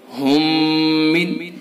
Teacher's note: میم ساکن کے بعد دوسرا میم ہے، تو اس کے اندر ادغام مثلین ہوگا